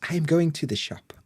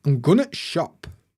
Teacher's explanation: we love glottal stops so much in Yorkshire we even do it to the word the